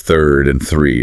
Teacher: to be technical, it's a dental fricative